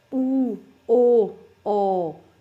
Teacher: ਉਸ ਤੋਂ ਬਾਅਦ ਹੈ ਪਿਛਲੇ ਸਵਰ, ਜਿਹੜੀਆਂ ਸਵਰ ਧੁਨੀਆਂ ਨੂੰ ਉਚਾਰਨ ਦੇ ਸਮੇਂ ਜੀਵ ਦੀ ਜਿਹੜੀ ਕਿ ਆਪਣੇ ਜੀਵ ਦਾ ਪਿਛਲਾ ਹਿੱਸਾ ਕਾਰਜ ਕਰਦਾ, ਭਾਵ ਕਿ ਪਿਛਲੇ ਪਾਸੇ ਜੀਵ ਦੀ ਜੜ ਕੋਲੋਂ ਧੁਨੀਆਂ ਉਚਾਰੀਆਂ ਜਾਂਦੀਆਂ ਨੇ, ਠੀਕ ਹੈ, ਪਿਛਲਾ ਹਿੱਸਾ ਕਾਰਜ ਕਰਦਾ, ਉਹਨੂੰ ਪਿਛਲੇ ਸਵਰ ਕਹਿੰਦੇ ਨੇ।